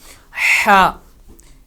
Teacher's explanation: اسی طرح اگلا لیٹر جو ہے وہ ہا، ہا حروف حلقی میں سے ہے اور ہا کو ادا کرتے وقت حلق میں سے آواز کا نکلنا لازمی ہے، حلق سے یہ اس کی آواز نکلے گی اور حلق کا اوپر والا حصہ استعمال کیا جائے گا